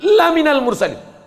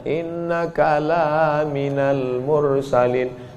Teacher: Lam itu kalau dibaca pendek, sungguh engkau adalah seorang rasul. Tapi orang sekarang asal lam panjang.